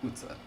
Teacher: they borrowed it, but they just killed the middle syllable. They're like, we don't need that.